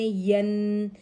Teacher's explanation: حرف کو مضبوطی اور جماؤں کے ساتھ پڑھتے ہیں، جیسے بی، یا کے اوپر دو زبر کی تنوین ہے، اسے غنہ اصلی کے ساتھ پڑھیں گے